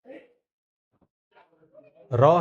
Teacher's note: र का जब हम उच्चारण करते हैं तो जीभ ऊपर की ओर कांपती हुई तालु के आगे के भाग को स्पर्श करती है, तो र का उच्चारण मूर्धा होता है।